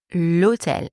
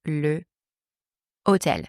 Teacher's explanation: I have to drop the final vowel of the word le before the mute H. So I say l'hôtel and not le hotel. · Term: elision